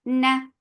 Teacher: This kunna is akmal, so keep the sound in your nose for a longer time. And then fatha is very short.